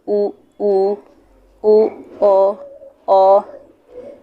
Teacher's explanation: जो ओठ है वो गोल खुलेगी, एकदम गोल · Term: वृतमुखी